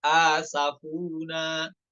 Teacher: asafuna mad badal ya. Dua harokat.